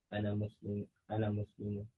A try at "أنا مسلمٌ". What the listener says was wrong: Now, when it has a tanween, I have to hear the noon. Ana Muslimun. Don't say Ana Musliman. Ana Musliman. Don't say Ana Musliman. Ana Muslimun. That noon, that's a tanween. I have to hear it.